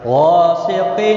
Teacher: ساکن کا اخفا ہوگا، را زیر کی وجہ سے باریک ہوگا، غین مستعلیہ ہے، پر پڑھا جائے گا